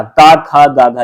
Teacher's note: ये सब कंठ से उच्चारित होते हैं